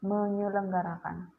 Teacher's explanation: Nah, di depannya itu ditambahkan menye atau morfofonemik. Jadi dia S dalam selenggara itu hilang. Menjadi menyelenggarakan, bukan menselenggarakan seperti itu.